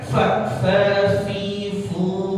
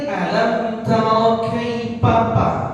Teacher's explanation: Ada sifat khams, ya, seperti orang mengeluarkan udara atau meniup, ya, nafsil, ya, jangan nafsil, jangan diganti huruf p, nggak boleh tuh. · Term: huruf fa